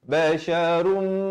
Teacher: Asalnya basyarun. Ra tanwin di depan bunyi run. Tapi datang mim jadi basyarum. Dua harakat. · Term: dengung